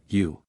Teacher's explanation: by bringing the teeth nearly together without completely joining them, and thrusting the 2 lips outward, also bringing them nearly together without completely joining them, U.